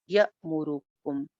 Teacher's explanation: حمزہ ساکن کے اوپر آواز اور سانس دونوں بیک وقت رک جاتے ہیں